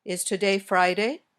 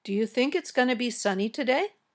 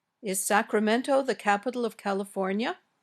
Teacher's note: questions the ones that can be answered with yes or no these questions usually have rising intonation your voice goes up at the end